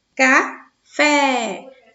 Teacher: Fé é a sílaba mais forte, de intensidade mais forte. Portanto, ela é a sílaba tônica.